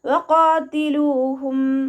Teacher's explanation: വഖാതിലൂഹും ഹത്താ ലാ തകൂന ഫിത്നതുൻ വയകൂന അദ്ദീനു ലില്ലാഹ് ويكون الدين لله فإن انتهوا فلا عدوان إلا على الظالمين വഖാതിലൂഹും വാവ് ഉച്ചരിക്കുന്ന സമയത്ത് ചുണ്ടുകളെ വട്ടത്തിൽ പിടിക്കുക കേട്ടോ. ഖാഫ് ഇസ്തിഅലാന്റെ ലെറ്റർ ആണ്, ഉയർത്തിയിട്ട് ഉച്ചരിക്കുക.